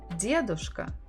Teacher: Stress on the first syllable.